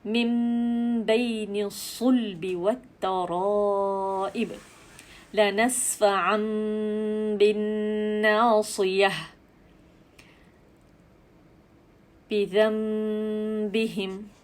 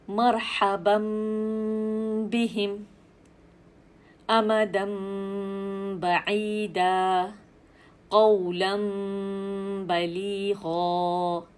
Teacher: نون ساکن کی آواز میم میں بدلی، اگلا حرف با ہے، ہم نے با کی ادائیگی کر دی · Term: اقلاب